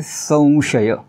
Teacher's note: समोर आलं तर अनुस्वाराचे रिप्लेसमेंट अनुनासिक व ने करायचा उदाहरण घेतो अनुस्वाराच्या समोर श आलाय म्हणून इथे अनुनासिक व टाकायचा आणि उच्चार करायचा संशय संशय असा उच्चार करायचा नाही संशय आणखीन